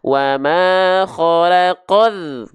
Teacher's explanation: Ini juga alif lam syamsiah ya. Dari qaf langsung masuk ke huruf yang bertasydid. Alif lamnya tidak dibaca ya.